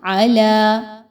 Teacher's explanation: آ کی حرکت 1 اور لا کو 2 الف کے برابر لمبا کریں گے.